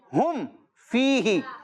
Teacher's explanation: और कायदा यही है कि मीम साकिन के बाद जब भी बा और मीम के अलावा कोई हर्फ आए तो वहां पर इजहार शफवी होगा, यानी उस मीम साकिन में गुन्ना नहीं करेंगे